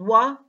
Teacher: glide consonant wah the speech organs are in the following positions the soft palate is raised allowing air to escape through the mouth and not the nose the back of the tongue is raised up in the mouth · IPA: /w/